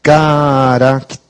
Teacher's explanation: quando vai para o plural, a sílaba tônica muda para o T